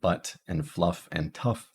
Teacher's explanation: the caret, which is our mid-central unrounded lax vowel. These are in words like butt and fluff and tough.